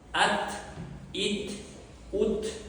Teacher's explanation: T sukunli bo'lganda hams sifatini berishimiz kerak.